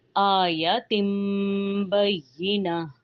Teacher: یا میں یا کی آواز نہیں آنی چاہیے کیونکہ یا اور جیم کا جو مخرج ہے وہ ایک ہی ہے، لیکن اس میں یا میں ش کی آواز نہیں آنی چاہیے۔